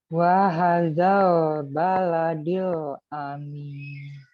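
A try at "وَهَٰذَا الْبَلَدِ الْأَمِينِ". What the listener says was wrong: Ya, wahazal, haknya dipanjangin sedikit lagi.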